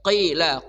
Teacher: qof dari pangkal lidah